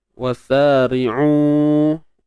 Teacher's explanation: Kemudian ri'u, baik, ra baris bawah kita baca dengan nipis. Kemudian u kita panjangkan 4 ataupun 5 harakat kerana adanya pertemuan huruf mat dengan hamzah di sini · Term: mat jaiz munfasil